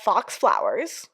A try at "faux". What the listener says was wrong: It's faux. The X is silent.